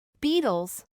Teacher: reemplazando el sonido de la T regular por el de la flap T, por encontrarse la T en medio de dos sonidos vocálicos